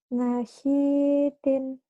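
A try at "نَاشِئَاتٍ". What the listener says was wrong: Nanya panjang. Nasitin. Lihat baik-baik tulisannya. Nasiatin.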